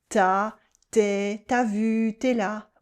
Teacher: We drop the U in tu before a vowel.